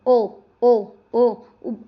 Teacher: कंठ और ओष्ठ क्योंकि होंठ भी तो अपना आकार बदल रहे हैं।